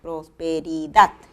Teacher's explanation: acento prosódico en la palabra prosperidad está en la última sílaba